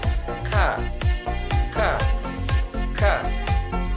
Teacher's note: sedikit di depan huruf qaf sifatnya nafas berhembus suara tertahan · Sifatnya nafas berhembus, suara tertahan, syiddah, lidah di bawah, istifal, terbuka antara lidah dan langit-langit atas, infitah, dan tidak lancar dan hati-hati, ismat.